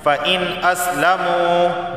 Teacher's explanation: نون ساکن کے بعد حمزہ حلقی کا آیا ہے تو صرف اظہار ہوگا